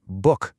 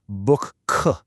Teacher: it's more like book k with this subtle little puff of air at the end. That tiny detail completely changes the texture of the word. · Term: hams